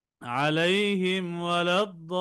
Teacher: মিম সাকিনের পরে ইজহারের 26 হরফের এক হরফ ওয়াও আশায় মিম সাকিনকে গুন্না ছাড়া স্পষ্ট করে পড়তে হবে। যেমন আলাইহিম ওয়ালাদ্দাল্লিন।